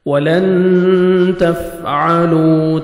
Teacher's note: اخفاء کریں گے، نوز میں ساؤنڈ لے کے جائیں گے